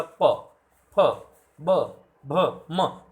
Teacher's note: जैसे प, फ, ब, भ, म, इनका अगर आप उच्चारण करोगे तो आप देखोगे आपके होठ आपस में स्पर्श कर रहे हैं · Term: ओष्ठ ध्वनियाँ